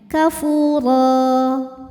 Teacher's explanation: Apabila berhenti di ro, maka ini hukumnya adalah mad iwad, sebab ada harokat tanwin fathah yang diberhentikan. Cara bacanya dipanjangkan 2 harokat ro-nya ya, tanpa bunyi n.